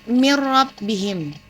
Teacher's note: nun mati bertemu dengan huruf ro, maka membacanya tidak dengung